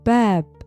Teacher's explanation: The a is open and bright.